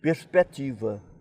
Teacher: perspectiva que nós pronunciamos o c e os portugueses não pronunciavam mas abriam o e da sílaba seguinte